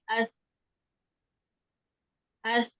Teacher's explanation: जुबान की नोक ऊपर वाले दांतों के किनारों से ऐसे लगानी है कि थोड़ी सी जुबान बाहर भी रहे।